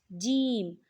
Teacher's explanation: جیم زبان کے درمیان اور تالو کے درمیان سے جیم ادا ہوتا ہے۔ آپ نے کیا کرنا ہے، زبان کا درمیان کا جو حصہ ہے اسے آپ نے اوپر والے تالو کے درمیان والے حصے سے ٹچ کرنا ہے، ٹھیک ہے؟